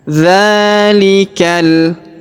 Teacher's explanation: Perhatikan huruf dza kita panjangkan 2 harokat karena terdapat alif kecil di atasnya.